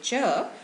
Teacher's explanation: cha is an unaspirated sound as i told you earlier no aspiration means no puff of breath when you say it · aspiration means no puff of breath when you say it so if you put your finger in front of your mouth and say cha you will feel very little breath coming out of your mouth